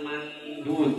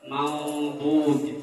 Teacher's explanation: Walaupun ikhfa, tetapi kita di sini ikhfanya ikhfa mufakhom ya, ikhfa tebal ya.